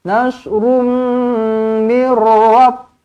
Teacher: jumpa dengan mim sabdu, rapatkan bibir. Rapatkan bibir, dengungkan 2 harakat.